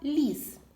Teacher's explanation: перший звук в слові ліс звук ль це М'який приголосний